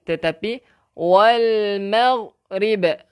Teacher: Sini saya nak tekankan bahawa jangan kita ada lantunan, bukan wal maghrib tetapi wal maghrib. Hati-hati nah untuk ghain. Kalau kita lantunkan dia automatik dah jadi huruf qalqalah.